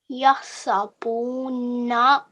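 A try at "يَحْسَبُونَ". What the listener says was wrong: But remember, stretch this out a bit longer, okay? Yahsabuna. So with these things, you just have to take your time.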